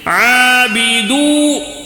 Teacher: عابدون میں عین کو کھڑا زبر ہونے کی وجہ سے تھوڑا کھینچنا ہے